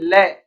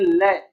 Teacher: एक ही वर्ण है ल, और इस ल का यदि हम उच्चारण कर रहे हैं तो ल का उच्चारण करने पर हमारी जो जीव्या है, ये जीव्या दंत के ऊपर मसूड़ों में अटक जाती है, ल यानी वहां पे चिपकी हुई रह जाती है। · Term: पार्श्विक व्यंजन